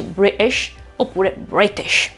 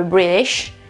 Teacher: in inglese britannico la T o si pronuncia oppure non si pronuncia per niente, bloccando l'aria, mentre in American English si pronuncia con una sorta di D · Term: glottal stop